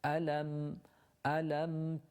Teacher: Begins with a hamza, alam, and when you have a sharp sound from the bottom of the throat, la, and then the lam with a fatha, and then the meme. The meme we hold or linger on slightly because it has a sukoon in it in order to make it audible in our recitation.